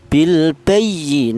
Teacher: huruf nun ini berharakat berdiri ini juga dibaca panjang yaitu satu alif atau dua harakat atau dua ketukan